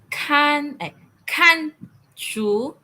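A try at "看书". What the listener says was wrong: Intonation. Fourth intonation. Ka. Kan.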